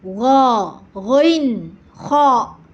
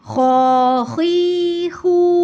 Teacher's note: huruf ghin dan kho ini memiliki sifat isti'la, jadi suaranya tebal. Jadi ketika dikasih harokat baik fathah maupun domah ataupun kasroh, dia tebal cara bacanya ya.